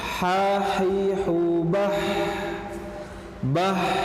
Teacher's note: ada hamas di sana, udara yang mengalir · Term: al-hamas